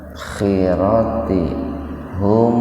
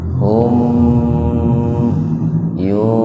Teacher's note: Mim mati ketemu dengan ya, nah itu dibaca idhar, mimnya dibaca idhar, dibaca jelas, tahan 2 ketukan itu Pak. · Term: idhar safawi